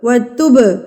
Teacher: قلقلہ کرنا ہے، لفظ کو مار کے پڑھنا ہے